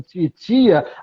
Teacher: titia começa com um fonema que só é produzido com a língua batendo no dente